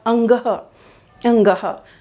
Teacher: जैसे हमने बोला अंगह अंगह, तो जब लास्ट में हम शब्द बोल रहे हैं अंगह, तो ऐसा हमें महसूस होता है कि नासिका से हमारी जो वायु है बाहर आ रही है। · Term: अनुनासिक